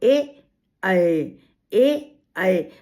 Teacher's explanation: कंठ से भी निकल रहा है और जीभ तालु में भी लग रही है। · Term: कंठ तालव्य